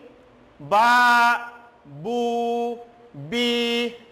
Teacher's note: 2 lips come together to produce the sounds of these 3 letters. It means when these 3 letters will pronounce, then 2 lips come together and produce the sounds. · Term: labial letters